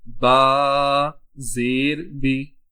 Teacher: یہاں ذرا سا منہ کھلتا ہے اور آواز تھوڑی سی گرا دیتے ہیں جب بی پڑھتے ہیں۔